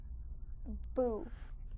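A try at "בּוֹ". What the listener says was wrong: No, that would be U. O, o vowel, bow.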